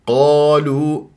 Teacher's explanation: القاف مفخمه مرتبه اولى مفتوحه بعدها الف من غير تكوير للشفاه